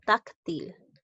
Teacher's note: Táctil lleva la mayor fuerza de voz en la sílaba tac